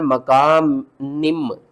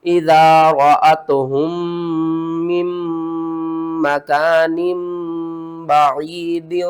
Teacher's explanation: नून दो जेर निन की आवाज को नून मीम दो जेर निम करके पढ़ना है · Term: इकलाब